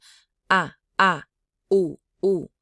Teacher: Hmong vowels are all glottalized. That means that the throat closes in and it makes that sound. Ah, u, u. So when you do a diphthong, you drop the glottalization on the second.